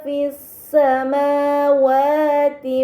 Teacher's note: alif lam syamsiah karena Hamzah wasal pada alif lam dibaca fathah lam pada Lam Syamsiah tidak dibaca namun langsung dibaca huruf setelahnya